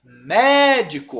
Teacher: Olha onde tá o mé antepenúltima não é a última não é a penúltima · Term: proparoxítona